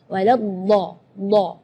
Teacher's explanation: huruf dhad itu keluarnya dari pinggir lidah maupun yang kanan ataupun yang kiri atau dua-duanya. Dan memang ada yang mengatakan bahwa Rasulullah Shallallahu Alaihi Wasallam satu-satunya yang bisa melafalkan huruf dhad dengan baik.